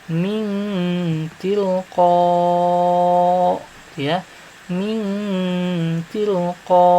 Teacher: Yang disamarkan itu yaitu huruf nunnya. Jadi seolah-olah tidak ada huruf nunnya karena disamarkan. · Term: ikhfa